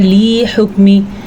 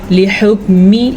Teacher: لام کو لمبا کرنا قطعاً جائز نہیں کیونکہ لامز لی اس کی اتنی ہی مقدار ہوتی ہے۔